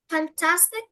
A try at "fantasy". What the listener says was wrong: No, fantasy. Fantasy is different to fantastic.